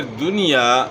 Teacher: اس میں جو ہے اظہار ہوگا یعنی غنہ نہیں ہوگا · اور پھر دنیا، یہاں آپ نے اظہار کرنا ہے، جس طرح اوپر آپ کو بتایا تھا اس طرح یہاں بھی دنیا کا لفظ آ گیا، تو یہاں جو ہے اس میں جو ہے نا اظہار ہوگا، یعنی غنہ نہیں ہوگا. اور الف سے پہلے زبر ہے تو آپ نے زبر کو کھینچنا ہے، یعنی ایک الف کی مقدار کے برابر آپ نے یہاں مد کرنا ہے، الف مدہ ہے.